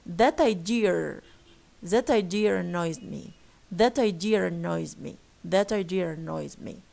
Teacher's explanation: the first word idea ends with schwa, and the second word or the following word starts with schwa. So here they say, or they prefer putting or inserting an R here in order to link the two schwas.